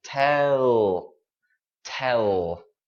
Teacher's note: make sure at the end of this word your tongue is right behind your teeth tell push your tongue push it act like you're you're punching